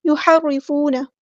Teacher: ہا کو وسطی لیکن مڈل تھروٹ سے ادا کرنا ہے